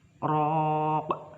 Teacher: Lalu ro ada fathah bertemu dengan alif, itu adalah mad tabi'i. Lalu pada huruf qaf itu diwaqaf, jadi itu adalah qalqalah kubro karena qalqalah tersebut terletak di akhir kalimat